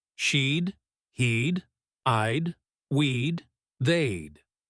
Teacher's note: If you're listening for a clear separate word, would, you might miss it completely, because in fast speech, it often shrinks down to something closer to a soft D sound stuck onto the end of a pronoun